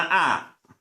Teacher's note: the T sound is always the glottal stop, the sort of grunting noise from the back of the throat